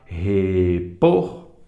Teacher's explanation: repor mais forte é o por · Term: oxítona